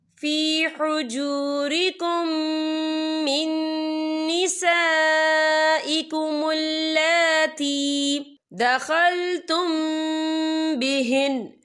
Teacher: یہ دیکھیں فی حجورکم، یہاں میم ساکن ہے، میم ساکن کے بعد جو ہے میم مشد والا حروف آ رہا ہے، تو یہاں پر ادغام شفی ہوگا. ہم پچھلے میم کو اگلے میم میں مدغم کریں گے اور ہم یہاں غنہ بھی کریں گے. اور آگے دیکھیں من نساء، یہاں خالص سے پہلے زبر ہے اور اس پر مد بھی ہے.